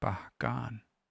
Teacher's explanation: It kind of starts out lower, higher pitch and goes lower. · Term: pitch accent